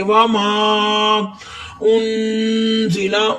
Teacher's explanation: نون ساکن کے بعد زا آیا ہے تو ادھر اخفا ہو رہا ہے، غنہ کریں گے ان پہ